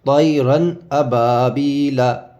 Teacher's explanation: آواز کو ناک میں نہیں لے جائیں گے بلکہ ظاہر کر کے پڑھیں گے